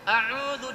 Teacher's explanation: lidah kita huruf dzal menyentuh gigi atas. A'udzu dan ditipiskan, karena kalau ditebalkan berubah menjadi huruf dha.